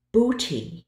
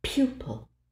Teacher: the only thing you should feel happening is your tongue arching into E before you make the second sound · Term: J Glide